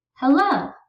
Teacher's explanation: we stress the last syllable the first syllable is unstressed